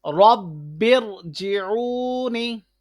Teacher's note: را ساکن سے پہلے دوسرے کلمے میں زیر ہے اس لیے را موٹا ہو رہا ہے